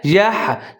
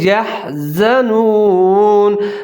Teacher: ہا کے اوپر ساکن ہے، یح، جھٹکے کے ساتھ پڑھیں گے